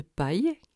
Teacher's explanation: Le ye de paille, qui est prononcé avec le dos de la langue très près du palais dur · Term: semi-voyeles, semi-voyelles